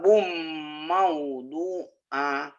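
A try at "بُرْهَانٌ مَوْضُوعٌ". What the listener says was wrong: Ahnya pendek. Ayo lagi.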